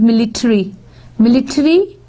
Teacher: In here in American, the emphasis is on tari. It is tari, whereas it is military.